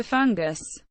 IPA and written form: ˈfʌŋɡəs (fungus)